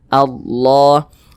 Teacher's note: seperti ini maka dia dibaca panjang sehingganya lafaz Allah dibaca panjangah Mad Thobi'i panjangnya dua harakat dua harakat itu kira-kira sepanjang dua ketukan